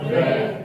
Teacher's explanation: रे का जब हम उच्चारण करते हैं ना, तो ऐसा प्रतीत होता है कि जैसे जिह्वा में कंपन हो रहा हो। कंपन बोले तो वाइब्रेट हो रहा हो। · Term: प्रकंपित